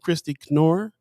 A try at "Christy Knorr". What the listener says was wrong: The K is not silent.